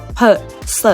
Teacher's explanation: โดยเสียงที่มันไม่ได้สั่นนะคะเราเรียกว่าเสียงไม่ก้องนะคะหรือว่าเสียงอุโฆสะ